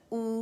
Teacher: جب ہم او کے ساؤنڈ نکالتے ہیں تو زبان پیچھے سے جو جڑ کے سائڈ کا حصہ ہے وہ ریز ہو جاتی ہے، سلانٹ ہو جاتی ہے. جیسے اگر یہ فلیٹ ہے تو یوں سلانٹ.